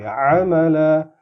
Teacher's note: عین کی آواز کو گلے پہ تھوڑا زور لگا کے